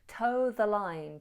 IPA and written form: təʊ ðə laɪn (toe the line)